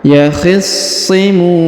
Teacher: Huruf sha berharokat tasdid maka ditahan dan ditekan · Huruf mu dibaca panjang, boleh 2 harokat, boleh 4, boleh 6 ya. Karena di depan huruf mu terdapat waw sukun sebelum huruf pemberhentian.